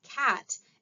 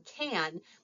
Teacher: the vowel sound in cat is the same vowel sound in can and the reason it sounds different is due to co-articulation